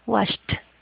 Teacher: Un verbo que termina en la P, en la K, en la S, en la F o en la H, ese verbo, o sea, esa ED no se pronuncia como se escribe, sino va a sonar como una T · Esa ED va a sonar como una T.